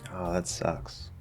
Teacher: the tone tends to be lower throughout the whole speech